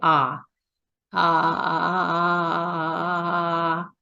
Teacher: you can hear the crackling sound and it's not clear at all